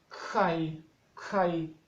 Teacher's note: es como K con aspiración